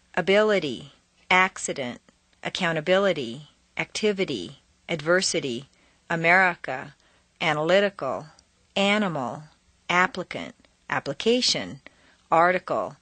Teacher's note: The letter I in the unstressed position devolves consistently into a schwa.